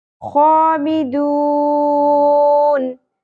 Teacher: खा खराश के साथ खुरदरा होगा, पुर होगा